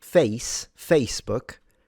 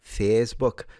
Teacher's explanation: someone from Yorkshire, they have these like elongated vowels. Rather than saying Facebook, they will say Facebook.